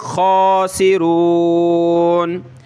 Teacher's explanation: ہم الخا پہ کھڑا زبر ہے، ایک الف کی لمٹ میں اوپر کھینچیں گے